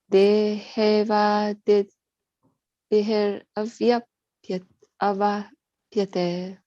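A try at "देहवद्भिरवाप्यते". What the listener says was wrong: Deha. So there's a difference between when a word ends in a A and when a word ends in a E, right? So A is pronounced as A. Deha. Deha, like that. And pyate. It's a E, it's a te, like that. Te. You see, when there is a line on the top like that, an accent on the top, te, right? Deha vadbhir avapyate.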